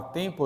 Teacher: M nessa palavra tempo aqui, como tampa, não é uma consoante, é parte de uma vogal nasal.